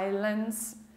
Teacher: Nós não pronunciamos o S